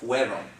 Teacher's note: Yeah, it's because you pronounce it almost like an IE, like fiero. It's fueron, okay? Kind of like a W sound.